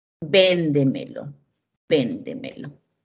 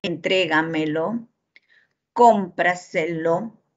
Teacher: llevan la mayor fuerza de voz en la tras antepenúltima sílaba son las sobresdrújulas